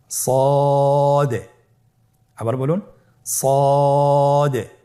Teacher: জিহ্বার আগা সামনের নিচের দুই দাঁতের পেট ও আগার সঙ্গে লাগিয়ে উচ্চারিত হয়